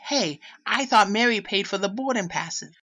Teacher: So one thing is she's dropping the R's in words like boarding.